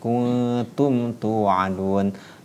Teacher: Kuntum tu'adun, tidak boleh dibaca dengan ikhfa, tidak boleh dibaca dengan dengung ya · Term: izhar syafawi